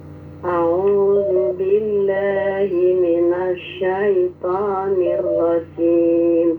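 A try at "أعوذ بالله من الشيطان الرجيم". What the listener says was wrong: temponya sudah bagus tapi jangan auto tapi diperjelas antara hamzah dan ain tadi kan.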